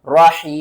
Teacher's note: وقف کی صورت میں میم کے اوپر جو پیش ہے نا اس کو آپ نے ختم کر دینا ہے، کس طرح؟ رحیم۔